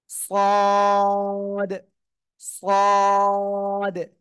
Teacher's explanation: অংশ আসলে অনেকের ভুল হচ্ছে হ্যাঁ আমি আবারও বলছি খেয়াল করেন জিহ্বার আগা সামনের নিচের দুই দাঁতের পেটও আগার সাথে লাগিয়ে উচ্চারণ হবে